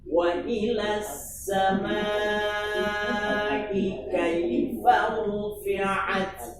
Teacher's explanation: Asalnya wa ila panjang, ketemu sukun pada as-sama, sukun ketemu sukun, takhallus bil hadfi dengan membuang mad pada ila menjadi wa ilas sama